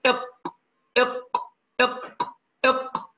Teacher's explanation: نقول يا أحباب أقصى اللسان من فوق طبعا، مما يلي الحلق، يعني قريب من الحلق، مع ما يحاذيه من الحنك الأعلى ويخرج منه حرف القاف، يعني نقول إق إق إق إق، القاف يخرج من أقصى اللسان